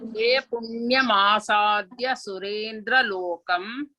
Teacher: Here asadya is alpha prana. Don't stress.